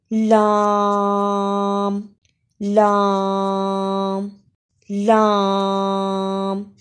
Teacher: लाम के अदा में जबान का किनारा जब सनाया रुबाई अनिया और जवाहिर मसूड़ों से लगे तो यह हर्फ अदा होता है